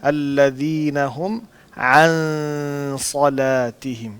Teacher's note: آپ نے عین کی آواز نکالنی ہے. عن صلاتہم پہ نا عین نکالنی ہے, ان نہیں کہنا, عن کہنا